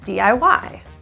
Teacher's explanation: We're going to stress the final syllable